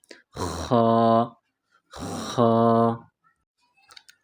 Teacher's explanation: اگلا حرف اس کو موٹا پڑھیں گے خا۔ خا، جس طرح انسان گلے سے بلغم نکالتا ہے، گلا صاف کرتا ہے، اس طرح پڑھیں گے